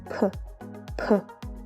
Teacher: These letters are pronounced with a very, very slight sound of h.